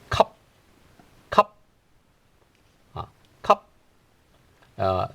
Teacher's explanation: you have to collect everything right at your throat right that's why I call it a glottal stop